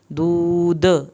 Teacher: آخر میں جب دود دال کریں گے تو دال پہ ہم کلکلا کریں گے